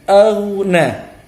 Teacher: Huruf ghain mati, sukun. Dia ini tafkhim, tebal.